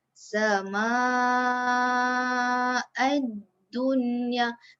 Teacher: Ni kan dalam satu perkataan. Jadi kita kena baca panjang 4, 5 atau 6 harokat. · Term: mad wajib mutasil